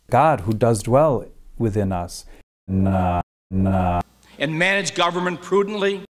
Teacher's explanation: examples of strut words being pronounced with a remarkably back and or low quality, but not rounded